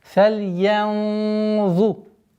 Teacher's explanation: Здесь у нас правило сокрытия, твердое сокрытие в размере двух огласовок, удерживаем назализацию.